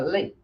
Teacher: Então este e final é quase que apagado, tá? Ele é bem reduzido, bem fraco.